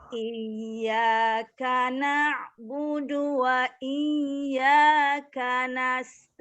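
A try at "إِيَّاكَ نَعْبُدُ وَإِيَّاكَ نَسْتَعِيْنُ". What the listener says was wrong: Coba Bu, untuk K-nya jangan dihamaskan dulu Bu. Kalau K itu K biasa saja. Karena dihamaskan, memang ada yang mengatakan dihamaskan. Cuman pendapat metode Umi itu dia menggunakan tidak dihamaskan.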